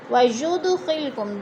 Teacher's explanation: دال ساکن ہے، حروف قلقلہ میں سے ہلا کر پڑھیں گے